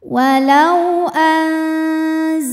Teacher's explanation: cara bacanya Nun dipanjangkan dua harakat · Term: Mad Thobi'i, mad tabi'i